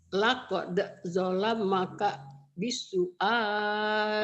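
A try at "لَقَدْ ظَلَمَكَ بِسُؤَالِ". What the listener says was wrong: Laqad bukan lak, laqad. Jangan laqad ngalir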